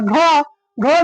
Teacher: ढ ढ में ह की ध्वनि सुनाई देती है। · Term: महाप्राण